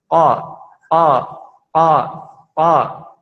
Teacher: Huruf qaf yaitu pangkal lidah bertemu dengan yang di atasnya, dekat dengan anak lidah. Qa. Sifatnya tidak mengeluarkan nafas, jahar.